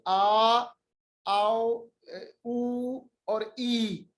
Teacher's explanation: जो हरूफ मद्दा कहलाते हैं हरूफ, यानी लंबे हरूफ, ये अदा होते हैं अल जौफ से